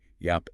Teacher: the vowel sound is a little more open in the mouth. It leans more towards an ah sound, not that clipped a you get in yep.